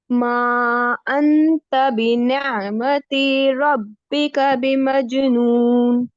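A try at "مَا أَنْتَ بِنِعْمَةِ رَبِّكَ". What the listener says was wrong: मा, 3 काउंट्स खींचिए इसको. मा अंत बिनियमती.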